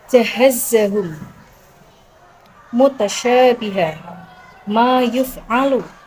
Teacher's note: Bunyi huruf jim, shin, ya keluar dari tengah lidah, bertemu menepati langit-langit atas.